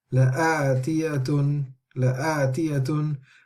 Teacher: whenever the hamza occurs without with the form of alif lam, with this alif lam, then this hamza will actually be read with a 2 count Mudd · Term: Mudd Badl